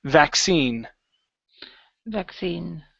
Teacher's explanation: here the stress is on the end of the word